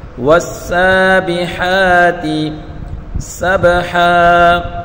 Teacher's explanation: نیچے زیر ہے تو اس کو بغیر کھینچے پڑھیں گے اور ہا کے اوپر کھڑی حرکت ہے ایک الف کی مقدار کھینچ کر پڑھیں گے